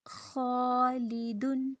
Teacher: اب ہم خا کو پر کر رہے ہیں، حروف مستعلیہ میں سے ہیں جو پر ادا ہوتا ہے، تو ہم ساتھ الف کو بھی پر کریں گے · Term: موٹے الف